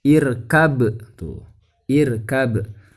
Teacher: berarti ba sukunnya dibaca memantul ya